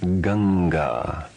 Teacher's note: Although it was mentioned that anusvara is used as an ending, it can also be used internally to represent any of the 5 nasal sounds. Anusvara followed by a guttural consonant is pronounced ng without the following a.